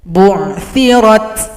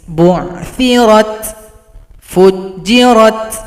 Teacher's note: Huruf ta jangan lupa diberikan sifat hamas.